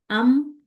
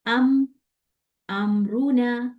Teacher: मीम के अंदर उसका जाती गुन्ना है, क्योंकि मीम गुन्ना वाला साउंड है ना, तो उसका जाती गुन्ना तो है ही है।